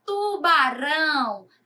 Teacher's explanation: também é oxítona porque a última sílaba é o mais forte